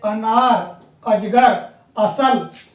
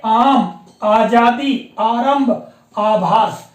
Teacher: अ और आ में मुख्य रूप से अंतर यही है कि अ के उच्चारण में मुख बहुत कम खुलता है और उच्चारण करने में बहुत कम समय लगता है अर्थात एक मात्रा काल का समय लगता है जबकि आ के उच्चारण में हम देखते हैं मुंह खुलता है